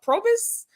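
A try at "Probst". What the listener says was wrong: where's the extra vow where's the extra vowel at the end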